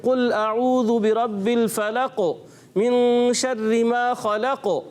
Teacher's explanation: یہاں قلقلہ کرنا ہے، آواز کو لوٹانا ہے، یہ ضروری ہے، صفات لازمہ ہے.